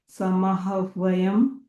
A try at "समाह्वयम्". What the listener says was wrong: No, you are saying samaha. You are saying it's samahvayam.